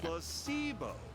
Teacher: The stress is on the middle syllable.